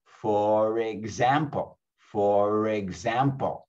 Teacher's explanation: the r at the end of the first word becomes the first sound of the following word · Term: phonetic linking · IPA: /fə-reg-zæm-pəl/